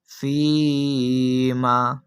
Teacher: اس یا مدہ کو ہم 1 الف یعنی 2 حرکات کی مقدار تک کھینچ کر پڑھیں گے